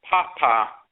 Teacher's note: when you say papa high to low that means good